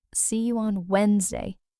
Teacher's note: But the correct pronunciation is actually Wednesday, just two syllables. The d in the middle is completely silent. It just doesn't exist when you say it.